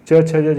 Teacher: च वर्ग का तालु होता है